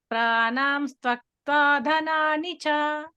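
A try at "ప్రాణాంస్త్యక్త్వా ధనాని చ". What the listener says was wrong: ఆ త్వ కాదు ఇక్కడ య వత్తుంది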